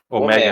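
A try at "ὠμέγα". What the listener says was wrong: ômega. Não é ômega, é ômega, ômega. A forma correta de pronunciar. Porque a ênfase é no epsilon, tá? Mega, mega, epsilon. Nós temos uma acentuação ali para que a sílaba é, é, tônica, a sílaba mais forte, a tônica, ela seja pronunciada, né? Mega, mega.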